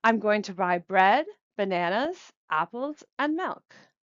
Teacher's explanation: falling intonation on the final item. This indicates to the listener that the list is over.